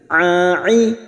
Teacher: huruf Ain memiliki sifat tawasud dan jahr jangan samakan dengan Hamzah